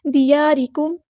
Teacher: دیارکم الف مد آ گیا تو مد اصلی کریں گے، ایک الف کے برابر لمبا کریں گے